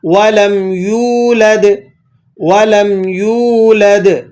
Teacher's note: ہم اس یا واو پیش یو کو ایک الف کے برابر کھینچ کر پڑھیں گے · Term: واو مدہ